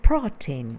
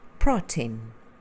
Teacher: with an open O and then an E sound in tin